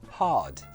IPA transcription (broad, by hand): hɑːd